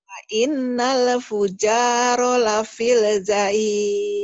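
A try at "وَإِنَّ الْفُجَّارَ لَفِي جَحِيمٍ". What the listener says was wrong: Wah, lapil sih. Emang ada lamnya? Emang ada lamnya, lapil? Gak ada. Wa innal fujjaro Gitu. Wa innal fujjaro lafi jahim.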